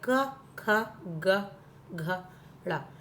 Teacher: आवाज आएगी कि गले से बोले जा रहे हैं, ये कंठ से बोले जा रहे हैं